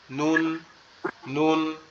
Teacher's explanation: জিহ্বার আগাটা উপরের তালুর সঙ্গে লাগবে, মানে আমাদের যে গালের মধ্যে যে উপরে যে অংশটা আছে, জিহ্বার আগাটা এই উপরের অংশের সাথে লাগবে।